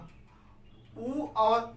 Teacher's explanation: ऊ और ऊ को ओठ के से बोला जाता है, इसलिए इसको क्या कहा जाता है, ओष्ठ।